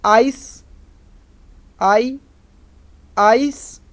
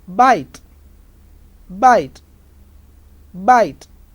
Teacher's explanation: wide open to begin with narrow for the second element · Wide open, and for the second element it becomes narrow. Wide open, e narrow, and unrounded sound.